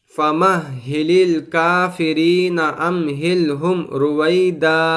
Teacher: اسی طرح امہلہم میں میم ساکن آیا ہے، اس کے بعد را آیا ہے، تو یہاں پر بھی میم ساکن کے بعد با اور میم کے علاوہ کوئی دوسرا حرف آیا ہے، تو یہاں پر ہم کو اظہار شفوی کرنا ہے، یعنی گنہ نہیں کرنا ہے بلکہ گنہ کے بغیر پڑھنا ہے، کیونکہ میم ساکن کے بعد را آیا ہے جو کہ با اور میم کے علاوہ میں سے ہے۔